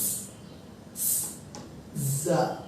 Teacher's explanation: জাটাতে নরম, একটু জিজির আওয়াজের মতো শোনা যাবে